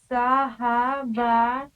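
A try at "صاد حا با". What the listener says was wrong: सौ नहीं, साद हा बा।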